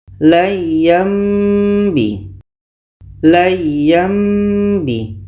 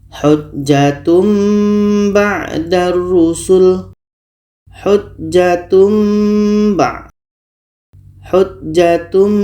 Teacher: bunyi tanwin kita tukar kepada mim dan ada dengung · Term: iqlab